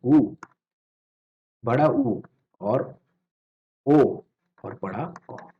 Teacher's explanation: इनमें आकार गोल होता है, गोल, बिल्कुल गोल। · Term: व्रतमुखी